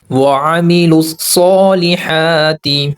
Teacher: وعملوا الصالحات، یہاں پر یہ جو واو ہے اور الف ہے یہ سائلنٹ ہے، اور اوپر ایک الف اور لام، یہ الف اور لام یہ بھی سائلنٹ ہے۔ لام کو صاد کے ساتھ ملائیں گے اور جمع سختی کریں گے۔ دوسرا جو صاد ہے یہ ہیوی لیٹر ہے، یعنی پر پڑھا جانے والا حرف ہے، اس کو موٹا ادا کریں گے۔